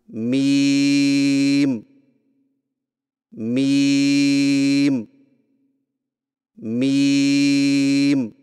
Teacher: میم کی ادائیگی میں ہونٹوں کے خشک حصے کو قدرے نرمی سے ملا کر باریک آواز میں پڑھیں